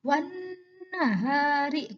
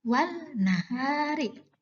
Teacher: Maka suara nun yang terdengar bukan suara lam. Wan nahari bukan dibaca wal nahari. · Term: idgham syamsiah